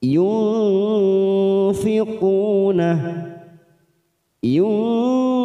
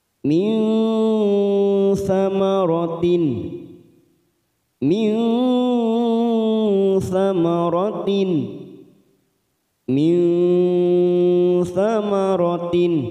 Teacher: tidak terlalu n juga tidak terlalu eng eng tetapi di tengah-tengah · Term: ikhfa ausat